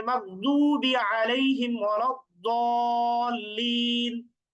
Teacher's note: দদের উচ্চারণ এমন সূক্ষ্ম উচ্চারণ যে জ এবং দ আসলে পার্থক্যই করা যায় না